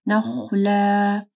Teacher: خا کو موٹا پڑھنا ہے